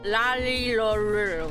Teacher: you're touching the same thing as you would say the L, but you kind of have to say the R sound at the same time, and it becomes a blend of the two